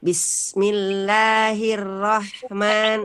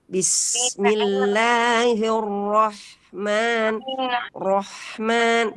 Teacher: Nah, itu berarti tipis ya yang kita baca. Jadi ro-nya harus tebal.